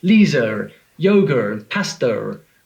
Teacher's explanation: the intrusive R intrusive meaning it shouldn't be there